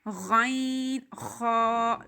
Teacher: 6 حروف ہیں جو گلے سے یعنی حلق سے پڑھے جاتے ہیں، گلے کے پہلے حصے سے۔ ادنائے حلق یعنی ابتدائے حلق، کلوزسٹ پارٹ آف تھروٹ، 2 حروف ہیں جو اس حصے سے پڑھے جاتے ہیں